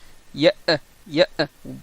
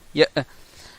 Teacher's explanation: par fermeture complète des cordes vocales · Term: hamza